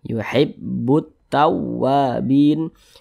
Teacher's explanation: Maka alif lam, ini alif ini lam berjumpa dengan huruf ta, hukumnya alif lam syamsiyah. Maka huruf lamnya dibaca idgham, sehingga huruf lamnya ini tidak dibaca, langsung masuk ke huruf ta